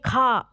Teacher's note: जब कहेंगे खा तो गले से तेज आवाज निकालनी पड़ती है थोड़ी ज्यादा मेहनत लगती है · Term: महाप्राण